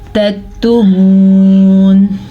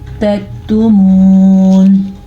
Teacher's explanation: تکتمون، یہ باریک کاف ہے اس لیے یہاں پہ اس کو موٹا نہیں کریں گے، اگر موٹا ہوتا تو پھر تو جھٹکا ہوتا، قلقلہ ہوتا۔ باریک کاف ہے تو یہاں پہ جھٹکا نہیں ہوگا بلکہ ہم اس کو نرمی سے پڑھیں گے